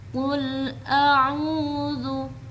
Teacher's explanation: setelah a yang makhrajnya berada di ujung tenggorokan langsung pindah ke tengah tenggorokan makhraj ain